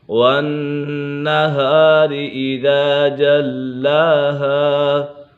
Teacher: نون مشدد ہے، نون مشدد میں ہمیشہ غنہ ہوتا ہے